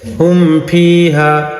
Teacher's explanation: ایک دم سے ظاہر کر کے پڑھیں گے میم کو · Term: اظہار شفوی